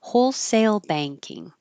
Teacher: together wholesale banking because wholesale is acting like an adjective here you'll start higher on wholesale and step down down down